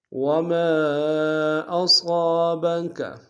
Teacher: وما میں مد منفصل ہے، کھینچیں گے 2 سے ڈھائی الف نار میں، صاد کو موٹا ادا کریں گے۔